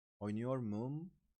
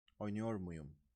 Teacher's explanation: in case there are 2 vowels next to each other, like U and U, we need to insert a Y buffer. So it becomes oynuyor muyum.